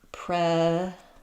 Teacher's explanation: in predatory, we have secondary stress. The or keeps its or sound, and the T keeps its t sound.